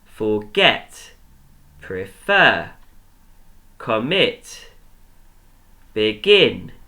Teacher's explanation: the last syllable is the one that is stressed and that's the one that we're going to pronounce louder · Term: the stressed syllable